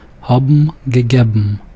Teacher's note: Note that haben is not pronounced haben, but haben and gegeben. So the N sound changes to the M sound.